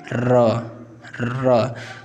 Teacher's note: हमारी जीभ इसमें लपटा जाती है एक तरीके से लुंठित करती हुई · र कैसा वर्ण है लुंठित पूछ देता है लुंठित यानी कि हमारी जीभ क्या होती है इसमें घूम जाती है एक तरीके से र कंपन जैसा होता है